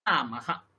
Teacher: আকারের পরে বিসর্গ তাহলে আ যতটা সময় লাগলো হা এখানেও ততটাই সময় লাগবে